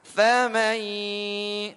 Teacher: Di sini pelafatannya ya karena nun sukun bertemu dengan ya maka setengah dari mulut setengah dari hidung keluar. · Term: idgham bi gunnah